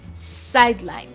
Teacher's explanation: the first syllable, which is side, the side there has the stress